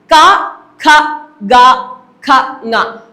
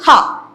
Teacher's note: കണ്ഠത്തിൽ, കഴുത്തിലാണ് ദൃഢമായിട്ട് പതിയുന്നത്. മറ്റു നിയന്ത്രണമൊന്നും ഉണ്ടാകുന്നില്ല. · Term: കണ്ഠ്യം